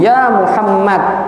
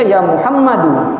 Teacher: Yaitu pada posisi dia waqaf yang sebenarnya dia berharokat, tapi karena kita pengen waqaf maka jadi dibaca sukun. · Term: sukun arid